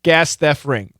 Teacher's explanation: The F is a pretty strong sound. So the F really killed the T, and then the R made sure the T was gone. So yeah, a combination of those two took out the T completely.